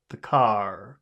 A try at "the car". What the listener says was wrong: Can you try to make the vowel sound a little bit longer? The car. Can you say ah? The car.